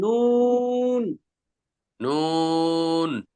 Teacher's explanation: জিহ্বার আগা তার বরাবর উপরে তালুর সঙ্গে লাগাইয়া নুন নুন দেখেন নুন বললে জিহ্বার আগাটা উপরে তালুর সঙ্গে লাগা যায়